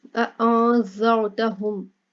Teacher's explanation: اَأَنذَرْتَهُمْ، نون، نون ساکن ہے، اس کے بعد زال آ گیا، ٹھیک ہے، تو زال جو ہے حروف اخفا ہے تو نون کے اوپر اخفا کر کے پڑھیں گے